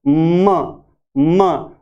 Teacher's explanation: तो हम म को जब बोलते हैं, एम को जब बोलते हैं तो दोनों होठ काम आते हैं, म। और इसमें जो बोलने का स्थान है वो है नेजल यानी नाक की सहायता से बोलते हैं, म। दो होठों के स्थान से बोलते हैं, बाइलेबियल।